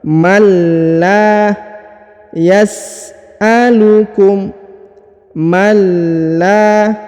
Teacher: huruf la dipanjangkan 2 harokat ya.